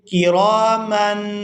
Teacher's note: تنوین پر اخفا کریں گے، آواز ناک میں جائے گی اور اس کو 1 سیکنڈ کے برابر ناک میں چھپا کر رکھیں گے